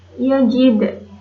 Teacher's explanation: Kemudian pada kata yajid itu ada qalqalah sugro karena ada huruf qalqalah dal, ada dal yang berharokat sukun dan posisinya di tengah kalimat. Cara membacanya dipantulkan secara ringan